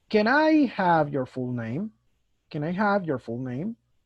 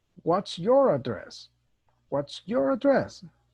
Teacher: most questions have a falling intonation a falling tone at the end